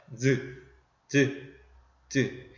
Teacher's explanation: 닿았다가 떨어지면서 마찰되는 소리다. 이게 지읒 발음이다.